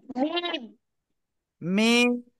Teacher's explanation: চার আলিফ টান হবে